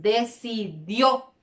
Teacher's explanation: Bien, tenemos en el primer cuadro última sílaba, entonces allí ubico decidió, porque allí en la última sílaba entonces cargo con mayor intensidad la voz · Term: sílaba tónica